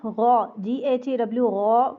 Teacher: गौ मोटा होगा और अलिफ मद्दा के साथ लंबा होगा।